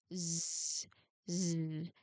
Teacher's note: I want you to feel that humming vibration in your throat. As you push the air through the narrow gap. · So I'm sorry, to produce the consonant sound, get your tongue into that S position, but before you let the air start hissing, turn your voice box on. I want you to feel that humming vibration in your throat.